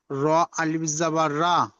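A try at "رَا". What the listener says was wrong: টান দাও, র আলিফ মাদ্দা পড়ে এসছো উপরে, টান দিয়ে পড়ে এসছো, তো সেটা এখানে টান দিতে হবে।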